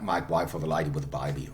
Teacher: So that the diphthong A is turned into something like I in Cockney English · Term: Cockney diphthong shift